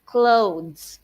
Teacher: for the clothes, teachers, the TH there would sound like D.